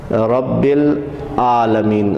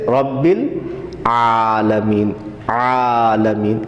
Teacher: عین کو صحیح طریقے سے گلے کے درمیان والے حصے سے ادا کیا جائے کہ اس کی آواز حمزہ کے ساتھ جو ہے وہ میچ نہ ہو